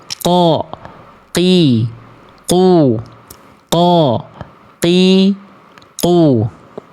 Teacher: Dia akan menghasilkan sifat yang namanya jahar. Jahar itu apa? Nafasnya nggak akan keluar. Nafasnya akan tertahan. · ketika huruf qaf ini dilafalkan ya dan dilafalkan tepat pada pangkal lidah yang menyentuh ke langit-langit paling dalam